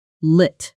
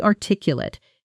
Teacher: that final syllable softens into a quick lit